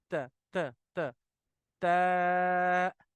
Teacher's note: आपकी जो tip of the tongue है, वो back side of the upper teeth, ऊपर वाले दांतों के पीछे लगाना है, थोड़ा सा ऊपर।